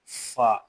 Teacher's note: ऊपर वाले दो दांतों का सिरा और नीचे के होंठ का अंदरूनी हिस्सा इससे फ अदा होता है। ठीक है? ऊपर वाले दांत है और ये नीचे वाले जो होठ है इनका अंदरूनी हिस्सा।